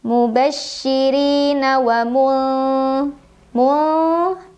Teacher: nun sukun dibunyikan samar-samar menuju dzal sambil dengung. Wa mulziri, ra dibaca secara tarqiq karena ra berbaris kasrah, jadi bacanya tipis. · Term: ikhfa awsat